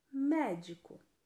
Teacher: A antepenúltima sílaba é a mais forte.